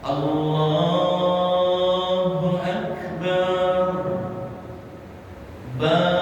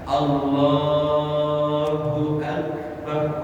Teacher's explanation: Ba-nya tak panjang, karena kalau ba-nya dipanjangkan makna berubah. Akbar dengan alif bar itu maknanya ad-dufun kabir.